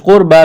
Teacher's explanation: قربہ قاف کو موٹا کرنا ہے، را ساکن سے پہلے پیش ہے، را کو موٹا کریں گے، با کو ایک الف کے برابر کھینچنا ہے۔